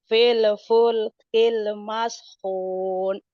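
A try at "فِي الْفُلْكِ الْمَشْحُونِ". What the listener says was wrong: Jawanya jangan kelihatan. Feel jangan ada e-nya. Feel full kill mashun.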